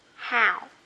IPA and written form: haʊ (how)